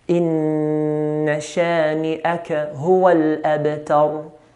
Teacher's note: Ra at the end is heavy because of the previous letter.